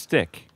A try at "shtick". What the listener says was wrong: It's not silent. It isn't. It's shtick.